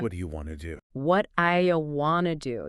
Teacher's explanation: that sound at the end of what often changes when it's between vowel sounds becoming more like a quick sound linguists call it flapping.